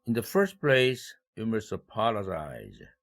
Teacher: 이때 first 여기에다가 일강세를 배정했는데 in the second place와 대조를 시키기 위해서 이렇게 first에다가 일강세를 배정했습니다. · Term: 대조 강세